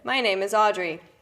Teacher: there's actually no space in between any of the words. It just sounds like one long word coming out of my mouth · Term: ribbon of thought